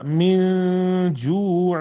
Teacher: یہاں نون کی آواز کو ناک میں چھپا کر غنہ کریں گے